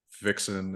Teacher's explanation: Yeah, I think that because now this is one thing that's actually now restricted to the West Country, is this word initial fricatives becoming voiced